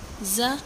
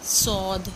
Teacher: ز میں باریک سیٹی ہوتی ہے اور صاد موٹی سیٹی ہوتی ہے۔ صاد دود جو ہے وہ زبان کے موٹے کنارے سے ادا ہوتی ہے، آخری حصے سے۔